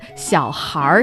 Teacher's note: It's the R at the end of it which makes it northern. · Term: 儿化音